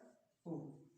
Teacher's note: उ का उच्चारण किया तो होठों की आकृति कैसे होती है? गोल होती है। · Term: वृत्ताकार